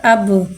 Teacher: बा के बाद साकिन है, साकिन को पहले वाले हुर्फ से मिला के पढ़ेंगे। और बा हुर्फ कलकला, लिहाजा इसमें आवाज़ लौटेगी। हमज़ा बा ज़बर अब।